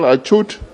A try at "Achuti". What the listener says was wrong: The actual pronunciation is Achuri. The T is pronounced as R-I.